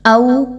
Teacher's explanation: واو پر جزم کا نشان ہے اور اس سے پہلے والے حرف حمزہ پر زبر ہے، باولین ہے، دو حرکات کے برابر اس کو لمبا کریں گے